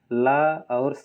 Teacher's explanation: ल और स को दंत दंत से बोलते हैं